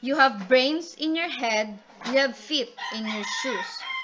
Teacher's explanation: It is the combination of two unstressed and a stressed syllable, dadadum. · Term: anapisk, anapisc